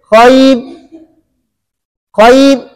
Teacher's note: تو را ساکنہ ماقبل یا ساکنہ کی وجہ سے را باریک ہوگی · را وقف بالاشمام میں بھی باریک ہے, وقف بالاسکان میں بھی باریک ہے. اس کی وجہ یہ ہے کہ وقف بالاشمام میں بھی را ساکن ہو جاتی ہے اور وقف بالاسکان میں بھی را ساکن ہو جاتی ہے.